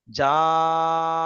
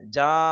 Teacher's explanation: জিমটা আলিফ মাদ্দা তাই জিম টান হয়েছে আর হা আর দাল শুধু হারাকাত জবার যুক্ত তাই এগুলো টান হয়নি সেজন্য জাটা টানলাম আর হাদাটা তাড়াতাড়ি পারি পার হয়ে গেলাম।